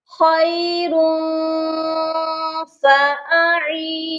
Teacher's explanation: عین کے ساتھ یائے مدہ ہے اور نون کے ساتھ واو مدہ ہے، پھر نون کے ساتھ یائے مدہ ہے. تو یہاں پر تینوں حروفوں کو لمبا کر کر کے پڑھنا ہے